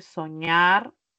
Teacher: Y al separar, enfatizo en la última sílaba. Soñar es una palabra aguda, pero que terminó en consonante y por esa razón nos lleva tile.